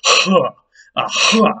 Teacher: This other H was what we call a voiceless pharyngeal fricative · this is an H that was a little throatier and harsher sounding. It's usually written with, at least not in IPA, as an H with that little dot underneath it.